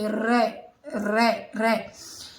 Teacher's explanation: दंतमूल का मतलब होता है जब हम रे बोलते हैं रे, तो हमारी जीवा का अगला भाग दांतों की जो जड़ होती हैं उनको क्या करता है, ऊपर वाले हिस्से को स्पर्श करता है, ऊपर वाले दांतों के रे रे रे।